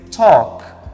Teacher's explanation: Eu não uso, né? Eu não pronuncio L. O L is voiceless.